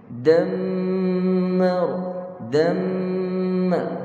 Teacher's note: Dan yang paling kita perlu tekan dan berikan lama sedikit adalah nun dan mim yang bersabdu wajibul ghunnah.